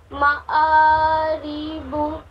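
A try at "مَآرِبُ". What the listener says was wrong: معارب، را کو اور جلدی پڑھیے، را زیر ری، معاری، معارب۔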